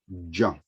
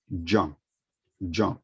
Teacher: So the correct pronunciation of the sound of this letter is ja. So there is like a slight d sound at the beginning.